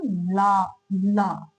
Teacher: side से हवा निकल रही है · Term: पार्श्विक व्यंजन